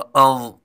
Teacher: ضا پر حروف ہے اور نرم حروف بھی ہے، اس لیے اس کو نرمی کے ساتھ ساتھ پر بھی پڑھیں گے